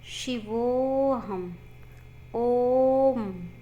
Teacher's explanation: इनके उच्चारण में दीर्घ स्वर से भी ज्यादा समय लगता है। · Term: प्लुत स्वर